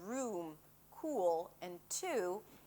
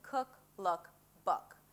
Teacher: Here we have the tense U as in 'room', 'cool' and 'two' and the relaxed U as in 'cook', 'look' and 'book'.